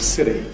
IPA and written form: ˈsɪt̬i (city)